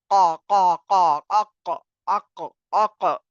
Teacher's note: Inshallah, these are the letter up to fa, and this is our qaf, qa, tongue, root of the tongue. Makhraj of qaf is root of the tongue